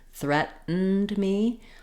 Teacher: word threatened within the word can also present some challenges where we do also use an unreleased T here for the middle T